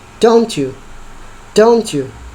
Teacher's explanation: ada T yang berubah menjadi J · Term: assimilation